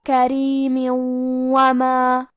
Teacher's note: ہم یہ تنوین کو واو میں ملا کے غنہ اور تشدید کے ساتھ ادا کریں گے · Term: ادغام